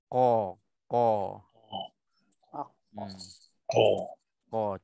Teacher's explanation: Cuma pastikan bila nak sebut qa ni dia nak kena mulut kita macam kita buka luas sikit supaya dia akan terjadi bulat dan juga kita kekalkan sifat tebal qa tu.